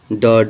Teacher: उत्क्षिप्त व्यंजन ड ढ होता है